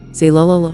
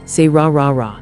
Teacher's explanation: L is made with your tongue touching the roof of your mouth behind your teeth. R is made with your tongue pulled back, not touching anything.